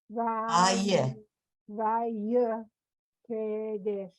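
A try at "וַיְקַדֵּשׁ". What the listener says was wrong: Not K. It's a line. It's a line under the kuf. Vayikadesh.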